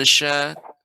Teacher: kumnya dibaca pendek. Mingnya yang lama. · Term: ikhfa